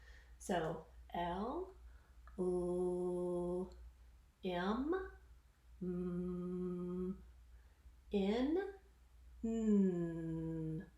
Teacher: consonants that are also continuous in voice. So again, I can feel this vibration in the voice and I can hold that sound.